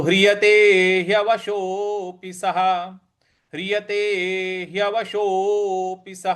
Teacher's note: मात्रा है तो हवशोपी इस प्रकार से बोलेंगे तो हवशो पिसः स के आगे जो विसर्ग है उसके आगे कोई अक्षर नहीं है तो इसको ह के उच्चारण में ले आएंगे